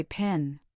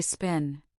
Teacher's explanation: Now say spin. Do you feel how the puff of air is much weaker or even absent? That is an unaspirated P. · When P appears at the beginning of a stressed syllable, it is accompanied by a strong burst of air. · You should feel a distinct puff of air on your palm. This is an aspirated P.